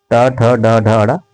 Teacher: ये जो है दोस्तों टावर्ग है, जिसे हम मूर्धा कहते हैं